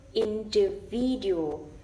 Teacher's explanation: So in is the secondary stress, and V is the main stress.